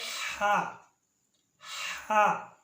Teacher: ہا وسط حلق یعنی حلق کا درمیان والا حصہ۔ ہا وسط حلق یعنی حلق کا درمیان والا حصہ، یہاں سے ہا ادا ہوتی ہے۔